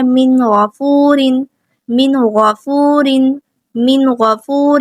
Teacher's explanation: نون ساکن، اس کے بعد غین آ گیا، یہ بھی حروف حلقی میں سے ہے، تو اظہار ہوگا، ظاہر کریں گے نون ساکن کی آواز کو